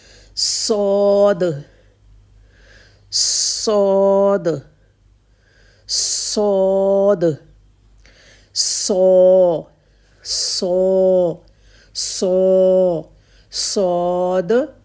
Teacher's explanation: صاد کے لیے آپ کی پوری زبان جڑ تک بھی اوپر کو اٹھ جائے گی